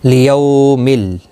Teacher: یو واولین ہے، تھوڑا نرمی کے ساتھ کھینچ کر ادا کریں گے.